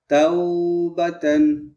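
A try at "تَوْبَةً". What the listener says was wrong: জি না জি না এখানে টান হবে না টান হবে না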